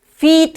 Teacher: जैसे कि बी के लिए बी की साउंड हमने निकाली तो वो छोटा उसका साउंड निकला ई का, और जब हमने बात की फीट की तो थोड़ा सा हमने ई की साउंड को स्ट्रेच किया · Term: लॉन्ग साउंड